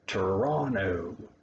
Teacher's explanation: there's a first t sound on that one but not the second one